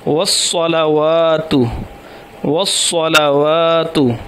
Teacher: صاد موٹا اور سیٹی کی طرح اور تے وہ باریک